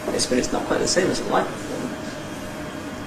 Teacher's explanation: Once again the Nuclear syllable drops, this is a flat Tail and a little rise at the end. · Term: Fall-Rise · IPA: jes bət ɪts ↘nɒk kwaɪt ðə ↘seɪm əz ə ˅laɪv pəₒfɔːməns